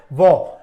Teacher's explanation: आपने बोला तो आपके दंत और ओष्ठ दोनों का ही कार्य हुआ